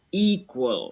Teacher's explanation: With equal, the stress is on the first syllable.